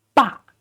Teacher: Bo and ah again, but this time is fourth tone, so you got to go down. So ba.